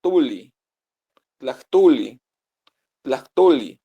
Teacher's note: el sonido de la O es el punto medio entre o y u